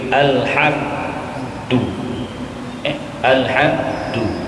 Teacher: dan mim mati kita putuskan di bibir